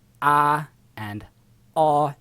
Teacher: Now there's a sharper version of ah that doesn't exist in most American accents anymore, because ah and aw have merged into ah in most American accents